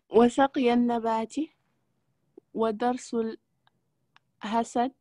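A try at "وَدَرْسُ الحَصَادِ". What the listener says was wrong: Abahd wa darsul hasadi. La liaison, c'est là toujours la liaison qui manque.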